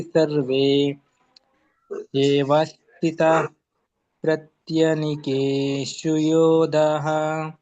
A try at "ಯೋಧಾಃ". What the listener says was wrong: ಯೋಧಾಃ ದಾ ದೀರ್ಘ ಇದೆ.